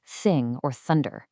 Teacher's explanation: the breathy air-only th sound in words like thing or thunder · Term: unvoiced dental fricative